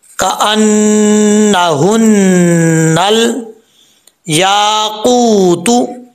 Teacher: जुबान की जड़ ऊपर वाले तालु के नरम हिस्से से लगे तो कौफ पढ़ा जाता है, दो नुक्तों वाला।